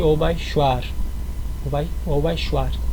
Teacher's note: É só um R que vibra um pouco, mas não tanto